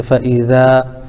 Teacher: الف سے پہلے ذال کے اوپر زبر ہے، اس لیے الف مدہ ہوگا، ان کو تھوڑا کھینچ کر پڑھیں